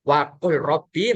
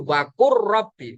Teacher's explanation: Lamnya seakan-akan tidak ada. Ada tapi tidak dianggap. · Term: idgham mutaqariban